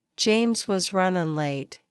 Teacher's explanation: Stress falls on James, run, late. Try to say it quickly and naturally. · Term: rhythm and stress